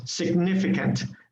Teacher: we stress on the second vowel on the second yes on the second vowel so um significant